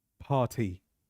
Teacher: R is silent and the t is subtle